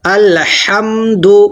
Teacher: الحم بڑی والی ہا ہے، حلق سے نکالنا ہے۔ الحمد، پیش کو جلدی پڑھنا ہے۔